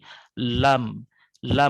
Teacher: Jadi yang kuning ini harus menyentuh dengan bagian kuning yang ada di sebelah kanannya. Jadi dari dua ujung sisi lidah hingga ke akhir ujungnya bertemu dengan gusi atas di hadapannya. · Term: huruf lam